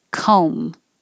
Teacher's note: it's just an o no b because you're closing your lips for the m anyway